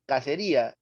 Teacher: se trata del mismo grafema, pero con distintos sonidos. El primero es K y luego es teta, o sea, Z. Añejo es así y agencia es así.